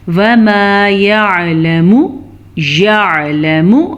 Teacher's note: عین کو واضح کریں، میم کو لمبا نہیں کرنا، لام کو لمبا نہیں کرنا